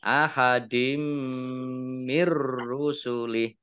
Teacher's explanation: suaranya masuk giih mimnya dibaca dobel ya Ada ditandai dengan tasdid mim tasdid dibaca ghunah atau mendengung ditahan dua harakat